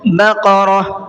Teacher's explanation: بقرہ، یہاں پر دیکھیے ہم نے گول تا پر آیت کی ہے اور جب گول تا پر آیت کرتے ہیں تو گول تا ہا بن جاتی ہے